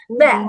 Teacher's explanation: Jadi tipis aja, nggak usah ba, jangan terlalu mingkem banget. Cara bacanya tipis aja, mingkemnya seperti ada kasih angin sedikit, kasih udara sedikit.